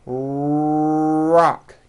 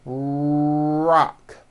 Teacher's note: notice how my lips are coming forward and my tongue moves back in my mouth and I push out the are sound watch this rock do